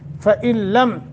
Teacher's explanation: لم یہاں اظہار کرنا ہے اور ادغام تو ہو رہا ہے، نون ساکن کے بعد لام مشدد ہے، تو یہاں ادغام بغیر غنہ ہے ۔ فإن لم، لم کو بھی لمبا نہیں کرنا، فإن لم